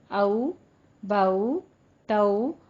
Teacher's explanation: वावलीन, वावलीन अदा होती है मुंह को दोनों होंठों को नातमाम गोल करने से, बिल्कुल ऊ की तरह नहीं करना। जैसे वाव मद्दा थी उससे थोड़ा कम रखते हुए 1 से 2 की मिकदार के दरमियान आपने इसका साउंड रखना है और औ की आवाज लानी है।